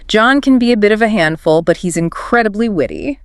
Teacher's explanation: You raise your pitch slightly on handful to show the contrast, and drop it on witty to land the compliment. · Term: intonation